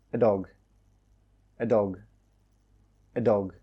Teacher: in fast spoken English it normally becomes a very soft weak uh sound · when I say these very quickly it sounds like I'm not even saying the a but I am I'm saying the schw sound that sound in